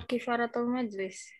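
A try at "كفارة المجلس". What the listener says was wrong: Kafaratul majlis. Kafaro bukan kifaroh. Kifarot itu ya kifarat. Kalau kafaro itu membubarkan. Kafaro.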